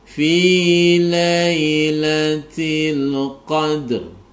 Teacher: Perhatikan ro ini dibaca tebal ya, karena ada ro yang berharokat sukun karena wakof.